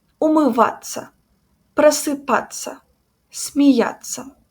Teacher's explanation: And rule number four the combination of those letters in verbs sounds like ца.